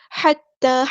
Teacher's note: ہا کو وسطی حرکت مڈل تھروٹ سے ادا کریں گے